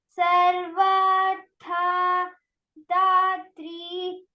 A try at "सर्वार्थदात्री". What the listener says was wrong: So So the first word in the second line, you should not take a pause after sarvartha. Okay. Sarvarthadatri. Continuous.